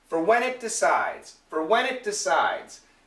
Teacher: get that W and then the N connects